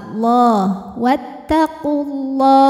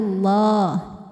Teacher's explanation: Karena huruf lam jalalah didahului harokat dhammah di qaf. Maka lam dibaca dengan tebal. Allah, wattaqullah. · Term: tafkhim